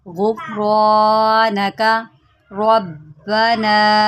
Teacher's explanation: रा को मोटा करें और बा के ऊपर जमाओ करें क्योंकि इसके ऊपर तशदीद है।